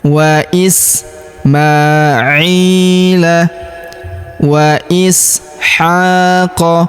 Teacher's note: Huruf i kita panjangkan 2 harokat karena ya sukun di depannya.